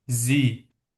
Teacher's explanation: bu samitdən sonra da sait gəldiyi üçün biz s-i artıq z səsi kimi oxuyacağıq. Ona görə bu söz bizdə olacaq zi. · Misal D-də bu i ilə e-ni biz birləşdirəndə, yəni bunu oxuyuruq uzun i səsi kimi